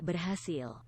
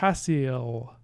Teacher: does anyone else hear that velarization on the L